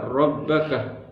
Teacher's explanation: Di sini terdapat huruf ra yang berharakat fathah. Maka hukumnya dibaca tafhim.